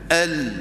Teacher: itu bacaan Melayu bacaan Arab dia sebut daripada tepi hujung lidah lam tu bunyi daripada tepi hujung lidah bukan Tengah hujung lidah